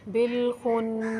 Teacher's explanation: با کے ساتھ جو الف ہے یہ الف نہیں پڑھا جائے گا، یہ الف با کے ساتھ ملنے کی، لام کے ساتھ ملنے کی وجہ سے حذف ہو جائے گا۔ خا پر حروف ہے، اس کو موٹا پڑھیں گے۔